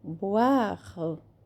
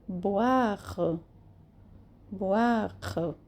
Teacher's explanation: Também é bem pronunciado o R. E a última sílaba bem suave, quase não pronunciada.